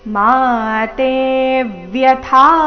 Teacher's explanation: ಮಾ ತೇ ಎರಡು ದೀರ್ಘ ತೇ ಮೇಲೆ ಆಘಾತ